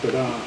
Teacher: a short pre-syllable and a strong stressed main syllable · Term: iambic rhythm